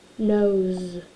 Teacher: So because our O is voiced, our S is going to be voiced. So it sounds a little more like a Z.